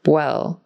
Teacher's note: It's almost like when her lips come together for the W, well, it's almost like they're turning into a B sound. Well. Just make sure when you do your W, your lips are looser.